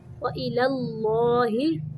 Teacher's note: پہلا لام باریک ہے دوسرا موٹا